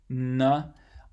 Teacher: N is an alveolar nasal sound because air can flow through your nose, or does flow through your nose when you make it.